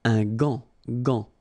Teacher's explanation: But in that case, you've got this A-N, so it's nasal, gant, and then final T is not pronounced here